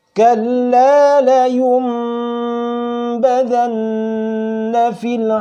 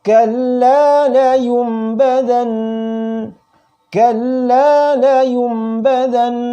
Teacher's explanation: bacaan iqlab dan Qolbi ini harus dibaca dengung tiga Oh ya ukuran tiga harokat make Perasaan hati tidak boleh kurang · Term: dengung tiga harakat